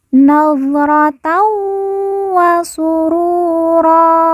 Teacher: Ru kita baca panjang 2 harokat karena di depannya terdapat huruf wawu sukun atau wawu mati